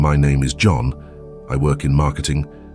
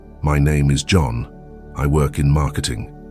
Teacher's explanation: This is a speech pattern where you end your declarative sentences with a rising inflection as if they were questions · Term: uptalk